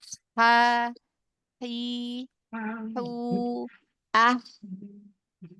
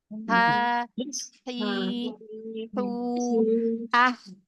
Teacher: Kalau huruf ha dia punya sifat ee hames, ya. Hames terus rakah. Jadi dialirkan nafasnya, dialirkan suaranya. Maka ketika kita mengucapkan huruf yang punya sifat hames, tenggorokan kita sudah pasti ee tidak ada getaran di pita suara ya.